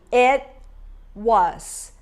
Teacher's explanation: T is a stop T, okay? É como a gente chama esse T, stop T. I don't say it, but I form it.